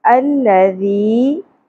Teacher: پر ہم الف کے اوپر زبر لگا دیں گے ال ذی ذال نرمی سے ادا ہوگا بزنگ ساؤنڈ یا سیٹی کی ساؤنڈ نہیں انی چاہیے الذی یا ساکن سے پہلے زیر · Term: حرف مدہ